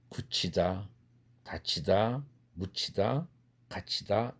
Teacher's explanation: 그래서 철자상은, 한국어 철자상은 디귿으로 써 있지만 드 사운드이지만, 드라는 음소이지만 뒤에 나오는 흐 사운드와 결합되면 한국어에서는 거센 소리로 변합니다